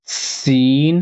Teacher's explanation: چھوٹی سین کی آواز ہوتی ہے سٹی کی طرح